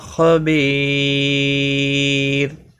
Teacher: بی یا مدہ ہے، ایک الف کے برابر کھینچ کر پڑھیں گے، اور وقف کی صورت میں را ساکن پڑھا جائے گا، باریک بھی پڑھا جائے گا۔ جب بھی را ساکن سے پہلے یا ساکن آتی ہے تو را ساکن ہمیشہ باریک پڑھا جاتا ہے وقف کی صورت میں، اور ملانے کی صورت میں ادغام ہوگا۔